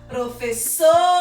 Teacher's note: Então, a sílaba que mais demorou foi so. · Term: sílaba tônica